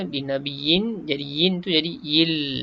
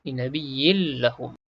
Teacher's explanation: Idgham dengan tidak dengung. Kita masukkan lam dalam tanwin ni tanpa dengung. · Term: idgham bila gunnah